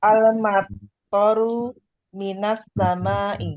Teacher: As-sama'i itu sinnya kan masuk, kalau ada alif lamnya berarti menjadi samsiyah.